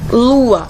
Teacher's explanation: lua eu abri minha boca duas vezes elas não estão tão conectadas e duas vogais não podem ficar juntos na mesma sílaba sendo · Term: hiato